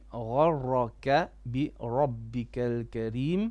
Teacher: Gha is heavy and ra is heavy.